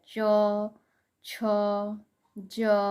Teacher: च, छ, ज। च वर्ग का जितना भी अक्षर होता है वो स्पर्श संघर्षी व्यंजन होता है